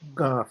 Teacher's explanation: And the key thing is whether there's a letter which teachers of literary Arabic call Qaf, and the Bedouin pronounce it Gaf with a voiced G